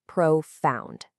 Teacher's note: The American pronunciation is profound. Notice how the stress is right there on the second syllable.